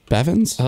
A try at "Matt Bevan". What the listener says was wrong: Added an S. I think you added an S.